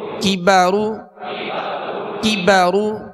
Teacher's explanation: کاف کو باریک پڑھنا ہے، یہ ڈنڈی والا کاف ہے، اور را کو پر پڑھنا ہے، را پر پیش ہے۔